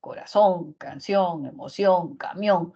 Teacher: la mayor fuerza de voz está al final en la última sílaba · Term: aguda